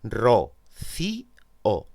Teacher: se produce un hiato, es decir, se pronuncian en sílabas distintas